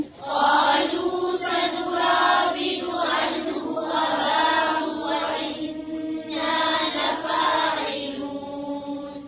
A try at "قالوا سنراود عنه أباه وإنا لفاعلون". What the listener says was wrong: पेश को लंबा नहीं खींचे, फिर से पढ़ें.